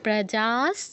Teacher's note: বিসর্গ পরে দন্তস থাকায় বিসর্গের জায়গায় দন্তস হসন্ত